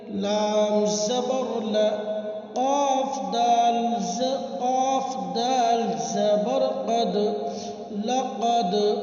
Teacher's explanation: دال حروف قلقلہ کے 5 حرفوں میں سے ہے، اس لیے ان کے پڑھتے وقت ان کے مخرج ٹکر کھا کر الگ ہو جاتے ہیں